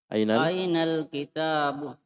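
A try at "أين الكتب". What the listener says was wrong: Tidak, tidak ada alifnya. Tidak ada alifnya. Coba lihat. Ainal. Di sini tidak ada alif. Di taknya tidak ada alif.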